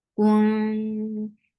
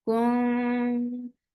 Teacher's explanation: As you will touch ikhfa, your lips should be in a straight position, and this ikhfa is light, so you're keeping your tongue straight.